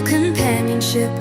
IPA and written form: kəmˈpænjənʃɪp (companionship)